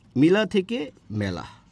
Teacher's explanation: আর আ কিন্তু ঠিকই আছে অর্থাৎ এই আতা ঠিকই আছে কিন্তু ই টা চেঞ্জ হয়ে এ হয়ে গেছে অর্থাৎ পরেরটা ঠিক আছে আগেরটা চেঞ্জ হয়ে যাবে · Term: পরাগত